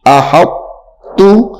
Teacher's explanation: توڑ کرتے وقت ہم طا کا نام لیں گے, جب ہم نے اس حرف کا توڑ کرنا ہے ہم طا کا نام لیں گے لیکن پڑھیں گے نہیں, پڑھیں گے تا کو.